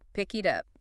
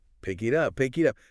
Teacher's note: The K links to I and the T which might become a flap T links to U. So it sounds more like pick it up. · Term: linking